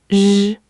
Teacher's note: It's not the rolling R of Spanish and not quite the English R in red. Same curled tongue as sh, but you add voice. Your throat buzzes. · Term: retroflex